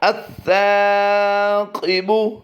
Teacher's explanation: سا کی ادائیگی کو ہم نے لمبا کیا ہے، قاف کو ہم پر پڑھیں گے